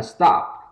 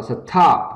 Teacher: Ok, she stopped, thì có cái từ stopped, thì chúng ta nhớ rằng là khi mà cái từ stop không thôi á, thì âm thi đứng sau S, thì chúng ta không bật hơi nữa